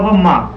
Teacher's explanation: पा का ओष्ठ है, ओष्ठ प्लस नासिका, ठीक है, तो इसका हो जाएगा माँ का